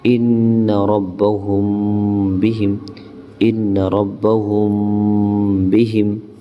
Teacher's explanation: اور ہم نے کیا پڑھا تھا اخفاء شفوی کے بارے میں کہ جب میم کے بعد یعنی میم ساکن کے بعد جب ہمیں با نظر آئے تو اس وقت ہمیں اخفاء کرنا ہے، یعنی ناک میں میم کی آواز کو چھپا کر پڑھنا ہے